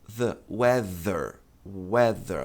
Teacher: E para produzir som, você coloca a língua entre os dentes também, mas produz um som de Z e não de S.